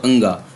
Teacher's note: अंगा भी कंठ से है, हालांकि इसका नासिक का प्रयोग भी होता है।